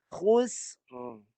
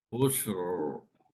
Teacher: Yang kedua, tebalkan, lengkungkan lidah, suara kena sampai hujung yang belakang lidah yang melengkung tu.